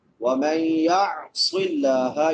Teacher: نون ساکن کے بعد یا ہے حروف یر ملعون میں سے ادغام مع الغنہ ، وَمَن يَعْصِ اللَّهَ، یا عین حمزہ نہیں پڑھنا، عین نکالنی